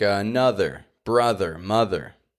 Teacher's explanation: have th in the middle of a word and they're voiced the difference is that they have th e in the middle